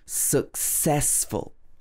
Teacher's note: It should be successful, stressing the ses.